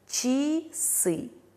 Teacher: Слово часы а находится после мягкой ч, а поэтому в безударном положении меняется на звук и.